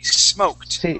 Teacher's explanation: This should be with a T and not a D sound. So smoked, that D will sound like a T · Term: ED ending